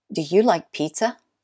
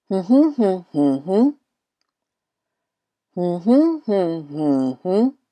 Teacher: when we ask yes/no questions we usually end the question with a rising intonation